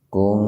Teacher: nun mati ketemu huruf ta dalam satu kata, maka dibaca samarnya sepintas saja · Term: ihfa